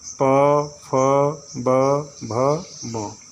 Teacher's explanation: ओष्ठ का तात्पर्य होता है ओठ का आपका दोनों भाग, ऊपर का नीचे का, एक दूसरे से लगता है।